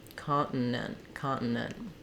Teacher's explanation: put the t's in parentheses is you really don't hear them we just stop the air to make it sound like a t continent continent really tough because it has double NTS in it